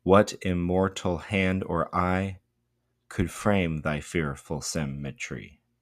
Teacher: it's sort of like it ascends to a point and then it descends into that question. · we get two stressed syllables back to back.